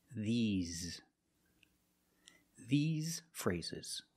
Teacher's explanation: the S makes a Z sound, like zebra. Z. You have a voice, you have vibration. Z. These.